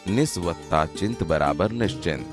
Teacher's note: સ પછી ચ કે છ આવે તો સ નો શ થાય છે. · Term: વ્યંજન સંધિ